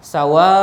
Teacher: Sawa ni adalah satu perkataan, satu kalimat. Maka alif bertemu dengan hamzah dalam satu perkataan, maka hukumnya mesti dibaca dengan paling kurang 4 harakat. Riwayat yang ada 4 harakat ataupun 6 harakat.